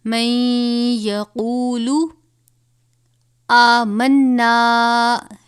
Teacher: وَمِنَ النَّاسِ مَن يَقُولُ، اب یہاں پر نون ساکن کے بعد حروف یرملون میں سے یا آیا ہے تو نون پہ ہم غنہ کریں گے